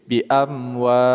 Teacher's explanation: Kita panjangkan 2 sampai dengan 6 harokat. Nama adalah mad arid li sukun.